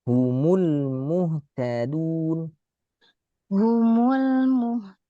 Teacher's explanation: Jangan keras karena dalnya Arab itu lembut, nggak seperti D-nya kita yang keras. Ya keras, dal Arab itu keras karena syiddah, tapi nggak sekeras Indonesia.